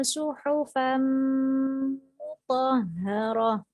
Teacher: tanwin bertemu dengan mim, dimasukkan dengan mendengung cara membacanya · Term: idgham biguna